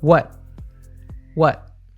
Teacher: In American and many variants of British English, we use a glottal T in what. We cut the sound off at the back of the throat.